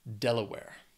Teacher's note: has three syllables stresses on that first syllable